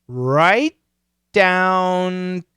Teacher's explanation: it's a stop t right but i don't finish right down and then i go right to the d same position